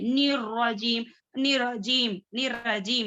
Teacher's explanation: निर मुशद्दा है तो थोड़ा प्रेस करेंगे,